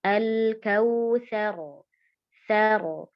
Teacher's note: Ketika sebelumnya berharakat fathah maka ro di sini dibacanya tafkhim atau tebal